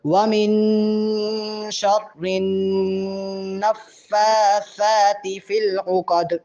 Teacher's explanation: فا پہ کھڑا زبر ہے، سا پہ بھی کھڑا زبر ہے، اس لیے ان کو تھوڑا لمبا کریں گے، 1.5 سے 2 الف کے برابر